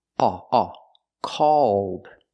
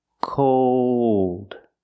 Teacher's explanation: the first word is the a sound a a called and the second word is the o sound plus the dark L cold again the first word called it's more open called and it's